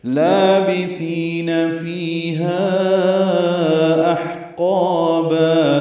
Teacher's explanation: لام باریک 2 حرکات لمبا کریں گے، با کو جلدی پڑھیں گے، سا کو نرمی سے پڑھیں گے. فی یا مدہ ہے، 2 حرکات لمبا ہے، فی یا مدہ ہے.